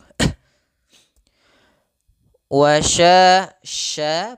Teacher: pada lafal sya sifat tafasyinya mengalirnya suara atau, ya, menyebarnya suara di dalam mulut itu lebih banyak dibandingkan yang kita keluarkan, sehingga wa sya terdengar dengan seperti ada y-nya.